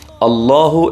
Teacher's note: പറയുമ്പോൾ നമ്മുടെ നാവ് പല്ലിൽ തട്ടുന്നുണ്ടോ എങ്കിൽ ആ അള്ളാഹു എന്ന് പറയുന്നത് ശരിയല്ല അള്ളാഹു എന്ന് പറയുമ്പോൾ നമ്മുടെ പല്ലിന്റെ മുകളിലെ ഊനിലാണ് നാവ് തട്ടേണ്ടത്